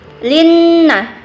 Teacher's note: Na mad asli. Linna, wajibu gunnah, wajib berdengunya sekitar 2 harkat. Na mad asli, panjangnya 2 harkat.